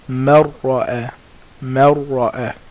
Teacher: We're putting the noon into the ra. It's disappearing. Marra'a. But there is no ghunna.